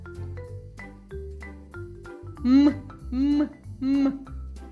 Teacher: при вимові звука м струмінь видихуваного повітря не виходить вільно він зустрічає перешкоду губи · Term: приголосний дзвінкий